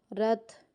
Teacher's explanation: را کو تا کے ساتھ ملاتے ہو یہاں پہ ہمس ہو رہا ہے